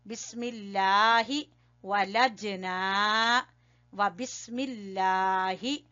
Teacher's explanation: یہاں لفظ اللہ کو باریک پڑھیں گے